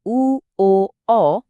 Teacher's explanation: উ, ও, অ বলার সময় জিভটা যেন একটু ভেতরের দিকে বা পেছনের দিকে গুটিয়ে যায়। এ কারণে এগুলো হলো পশ্চাৎ স্বরধ্বনি।